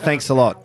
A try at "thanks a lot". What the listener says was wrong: Like you say thanks a lot so quick.